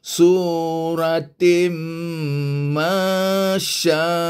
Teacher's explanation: Tanwin bertemu dengan mim, maka kenalah bunyi tin hilang, tinggal bunyi tim. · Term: idgham bigunnah